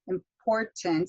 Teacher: you've got that stress on that second syllable